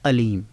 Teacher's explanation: عین کے مخرج کو ادا نہیں کرتے، عین کو اس کے اپنی ذاتی آواز سے ادا نہیں کرتے بلکہ حمزہ کی آواز سے ادا کرتے ہیں